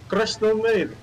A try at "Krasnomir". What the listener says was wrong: Yeah, perfect. Much better than mine. You lost the last syllable, though.